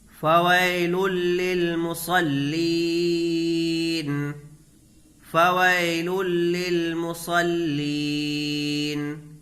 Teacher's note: فا کو جلدی پڑھیں گے، فا کے اوپر زبر کی حرکت ہے، یہاں یا لین ہے، یا ساکن سے پہلے زبر کی حرکت ہے، اس کو نرمی کے ساتھ جلدی پڑھیں گے